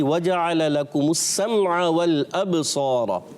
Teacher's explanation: लाम को नहीं हिलाएंगे, बा में कलकला करेंगे